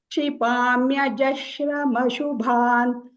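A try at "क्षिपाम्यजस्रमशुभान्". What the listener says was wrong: Right. Jashrama nahi. Jasrama. Sa. Jasrama. Shra nahi. Sa. Sa. Shra nahi hai, Didi. Wo shra.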